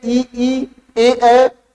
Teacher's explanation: जब हम बोलते हैं ई ए, तो आप देखेंगे कि जीवा के आगे वाले हिस्से से ही उसका उच्चारण होता है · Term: अग्रस्वर